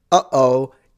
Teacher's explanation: the cartoonish sound, uh-oh, is a glottal stop